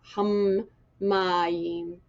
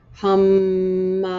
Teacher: And what I heard with this dagesh in the meme, instead of saying hum mayim, like this is one syllable hum and this is a separate meme ma, just make sure you really sound out the meme like you're holding it a little longer.